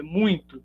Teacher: É muito, porque a sonoridade a nasalidade do M acaba atingindo o I aqui posteriormente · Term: nasalização